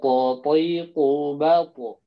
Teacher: sebagian besar lidahnya naik ke langit-langit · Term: tebal